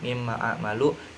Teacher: idgham bigunnah karena mim bertasdid cara bacanya ditahan dengan dengung